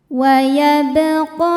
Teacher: Qa hukum tajwidnya adalah mad thabi'i muqaddar. Sebab ada huruf qaf dengan harakat fathah panjang. Cara bacanya panjang dua harakat.